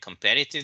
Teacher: the stress is on the second syllable not on the last one if you say what you said the first time during your